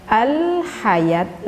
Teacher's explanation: Seperti ketika kita mengucapkan al-hayat, lamnya nampak jelas oleh kita. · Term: Alif Lam Qomariah, alif lam qamariyah